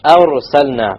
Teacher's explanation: Heavy ra, because it's silent with a fatha before it.